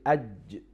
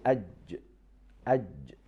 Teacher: letter jim has connection, full connection between the middle part of our tongue and the hard palate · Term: shadda